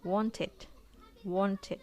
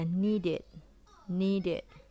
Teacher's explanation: Ketika suatu kata diakhiri oleh de atau te, maka ed endingsnya akan dibaca it.